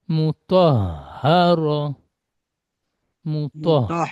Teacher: আর এই হাটি গলার শুরু ভাগ যেটা বুকের দিকে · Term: ছোট হা